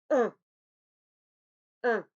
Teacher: Et bien sûr, l'air passe par le nez, car c'est une nasale.